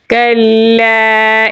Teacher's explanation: کاف کو باریک پڑھیں گے اور لام کے ساتھ ملائیں گے کیونکہ لام کے اوپر تشدید ہے